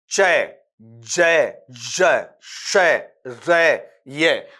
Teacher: टंग का जो आपका फ्रंट हिस्सा है वो आपके हार्ड पैलेट की तरफ जाता है। जैसे आपने कहा चय, जय, जय, शय, रे, ये, तो यहां पर जीभ है यूं की यूं पड़ी हुई है और ये ऊपर से क्या करती है, ऊपर के तालु को हल्का सा टच करती है, मुड़ती नहीं है। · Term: पैलेटल साउंड